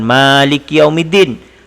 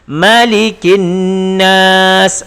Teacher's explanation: Ingat, malikin nas ma pendek, bukan maliki yaumiddin. Maliki yaumiddin ma panjang, kalau malikin nas ma pendek.